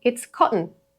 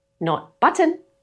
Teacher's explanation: The t becomes a glottal catch before the n.